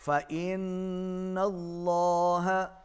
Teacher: نون پر تشدید ہے، غنہ ہوگا، اللہ کا لام موٹا